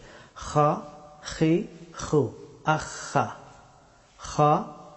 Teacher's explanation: খা হরফটি উচ্চারিত হয় গলার উপরের অংশ থেকে